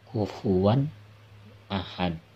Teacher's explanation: Jelas, nun mati atau tanwin bertemu alif, izhar jelas ya. Kufuwan, nunnya jelas terbaca, bukan dengung